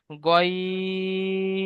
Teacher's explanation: star চিহ্ন আছে, পুর করে পড়তে হবে, মুখ গোল হয়ে যাবে, তিন লেখা রয়েছে, এই জন্য তিন আলিফ পরিমাণ টান দিতে হবে